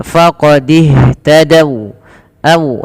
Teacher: waw di sini berhenti, wawnya dimonyokkan